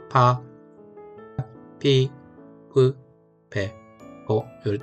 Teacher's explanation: 파, 피, 흐, 배, 포 이렇게 피읍 발음이 납니다. 그런데 우리나라 파보다는 파열음이 좀 바람이 좀 덜 나가는 거니까 좀 조심스럽게 하시면 되겠습니다. 파가 아니라 파, 피, 흐, 배, 포 요 정도로 발음하시면 되고 요 반탁음인 경우도 뒤에 올 때는 약간 빠, 삐 이런 식으로 좀 발음이 세질 수 있다라는 거.